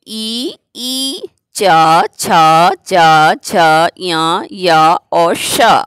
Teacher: इनका उच्चारण स्थान है तालु। इस कारण से इन वर्ग का नाम हो जाएगा तालब।